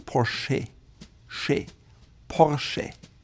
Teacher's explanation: It's a slight R in the back of your throat. And the E sounds like an actual E.